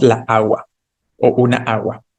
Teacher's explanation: como tenemos dos sonidos a fuertes Juntos por eso no decimos la agua